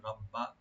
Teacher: রব্বা, রব্বা, এখানে কোনো টান হবে না, শুধু রাটাকে ডিপ করবেন আর বা ডাবল করে পড়বেন, রব্বা। আর বাতে কোনো টান হবে না।